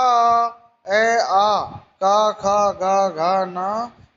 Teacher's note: ए आ का खा गा घा ना है और विसर्ग ये कंठ से बोले जाते हैं। इनको वर्णानाम संज्ञा कंठ्या, कंठ कहते हैं।